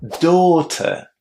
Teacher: Now, as you could hear, I wasn't pronouncing the final R in that word.